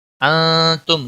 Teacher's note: نون ساکن کے بعد حروف اخفا کا تا آیا، اخفا حقیقی ہوگا، گناہ کے ساتھ پڑھیں گے۔ میم ساکن پر اظہار ہوگا، اس اظہار کو اظہار شفی کہتے ہیں، گناہ نہیں کرنا۔